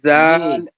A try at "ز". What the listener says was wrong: زا کو اور تیز کیجیے، زا کو سختی سے نکالیے، زا